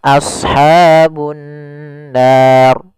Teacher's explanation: Di sini ra-nya adalah ra tafkhim, ra yang harus dibaca tebal.